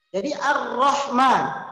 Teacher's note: alif lamnya tidak terbaca, disebut alif lam syamsiyah